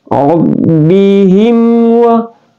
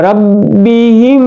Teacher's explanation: Rabbihim wa ya langsung masuk ya. Izhar syafawi itu ya dibaca jelas terang tanpa dengung.